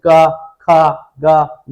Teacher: केवल हवा मुंह से निकलेगा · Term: निर्नुनासिक